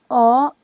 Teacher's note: जीभ का मध्य भाग काम करता है अ स्वर के उच्चारण में